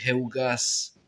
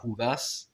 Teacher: Mais je crois que dans les Landes, ils disent ça Hugas, avec un ou et pas avec la diphtongue eu. Donc on va dire Hugas.